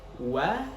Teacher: Oke, kita lanjut ke ayat selanjutnya, ayat ketiga, yakni wa min syarri ghasiqin idza waqab. Nah, wa itu kita harus monyongkan terlebih dahulu, kemudian langsung cepat kita posisikan kembali seperti semula atau terbuka ya, yang mana itu adalah itsmamul harokah.